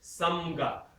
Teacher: Your mouth is first forward, ma, and ga is way back. Ma is far forward, right?